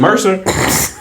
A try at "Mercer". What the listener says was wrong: Why you got to put so much emphasis on Mercer? you pronouncing the M in Mercer the way racist people pronounce the R and the M word.